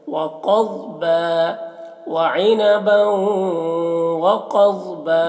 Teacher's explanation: کو واو سے ملا کر غنہ کے ساتھ میں وعنبا وقضبا قاف کو اور ضاد کو دونوں کو موٹا کریں گے